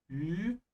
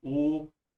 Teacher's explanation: Ü with the tongue stretched forward and O with the tongue pulled back.